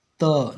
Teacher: जब त बोलेंगे ना तो इतना जोर से आपका जीभ आपके ऊपर वाले दांत को धक्का मारता है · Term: दंत व्यंजन